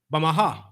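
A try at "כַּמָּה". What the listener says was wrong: you said Bama by accident, but it's Kama. Kama. You said Ba. It's Kama.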